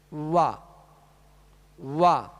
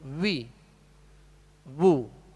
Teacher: تو پہلے حرف کو جب حرف کا نام لیں گے، حرف کو جب نکلے گا تو ہونٹ گول رہیں گے، اور جب زبر پڑھیں گے تو آواز اور منہ کھول دیں گے